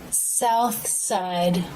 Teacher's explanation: see the unvoiced th linking with the s sound south side tongue tip comes through the teeth for the th then the tongue tip comes back into the mouth and lightly touches behind the bottom front teeth while the teeth close to make the s sound